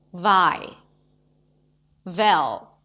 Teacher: a lot of speakers actually substitute the w sound with the closest sound that does exist in Russian, which is the V sound.